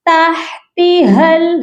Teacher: یہاں پر ہم اپنی آواز کو ناک میں چھپا کر پڑھیں گے. تحتها، ہا کی آواز سینے سے آئے گی